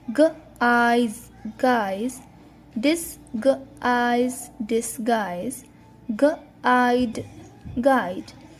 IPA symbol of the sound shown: aɪ